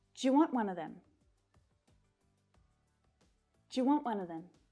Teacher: we can definitely reduce do you to Jew to be honest that T as well will almost disappear one